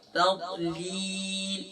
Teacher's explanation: ضاد فل ماؤتھ ہے، تا لائٹ ہے